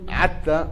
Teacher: أهل هذيل يقولون عتى بدل حتى